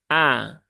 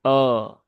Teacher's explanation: pastikan dia juga huruf tipis ya A bukan o